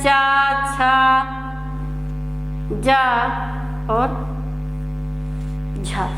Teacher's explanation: स्पर्श संघर्षी व्यंजन चा वर्ग के आते हैं